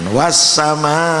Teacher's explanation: Bacaannya panjang 5 harokat, berarti 5 hitungan. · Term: mat wajib muttasil